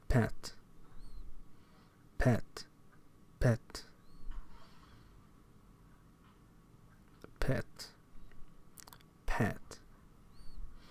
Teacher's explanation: When the VOT of a stop is rather long, as in the case of English and Danish voiceless stops, a puff of air follows the release of the stop before the regular voicing of a following vowel begins. This is called aspiration and indicated in IPA by a small raised H, as in P and then H above it.